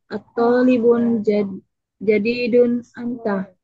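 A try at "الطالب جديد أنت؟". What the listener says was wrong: Intonasinya, intonasinya bertanya. At-talibun jadidun anta?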